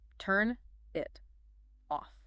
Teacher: >> But in connected speech, look at the boundaries. Turn ends in an N consonant. It begins with an I vowel. So the N links forward. It ends with a T. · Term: linking